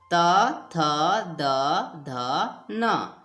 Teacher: उच्चारण स्थान है दांत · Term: त वर्ग